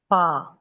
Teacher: सनाया अलिया के जो सिरे हैं, निचले होंठ के जो उभरा हुआ अंदरूनी हिस्से को लगाते हुए अदा करना है